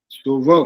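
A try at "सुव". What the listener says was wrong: ठीक है, ए की आवाज नहीं आए, सुबह ऐसे नहीं, यद भद्रन तन्न आ सुबह, ठीक है, हाँ ए नहीं लगाना, ए की आवाज नहीं आनी चाहिए। जब कै बोलोगे ना तो कभी ठीक नहीं होगा। क ग ये अ की आवाज अकारांत है, एकारांत नहीं है ये।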